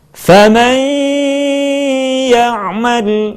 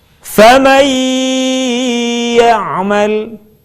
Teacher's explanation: kalimat faman ya'mal akan lebih sempurna kalau sebagian suara kita keluarkan melalui rongga hidung. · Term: gunnah